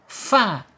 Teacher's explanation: ujung gigi seri atas menyentuh perut bibir bagian bawah